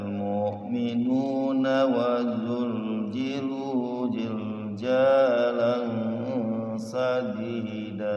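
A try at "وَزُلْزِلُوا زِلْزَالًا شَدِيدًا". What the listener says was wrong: Sin besar. Zilzalan syadida wa zulzilu Hati-hati kalau kita mau wasol huruf nun yang ada alifnya itu tidak boleh dibaca panjang.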